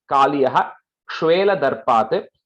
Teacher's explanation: When that Ksha is coming, you have to say that Visarga.